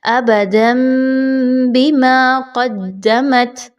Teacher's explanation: آگے چلیے تو ابداً بما، تنوین کے بعد 2 زبر کے بعد با کا حرف آ رہا ہے. آپ نے تنوین کی آواز کی بجائے یہاں پر میم کی آواز کو نکالنا ہے. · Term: اقلاب